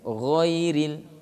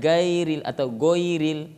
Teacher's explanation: Jadi gha, makhraj ghain ini di ujung tenggorokan.